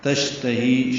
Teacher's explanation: شین ساکن پہ ہمس تفشی ہے، آواز منہ میں پھیلتی ہے